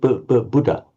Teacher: In fact, the Burmese are doing exactly the same as we're doing in English. They're dropping the aspiration of the dha, and they aren't doubling it.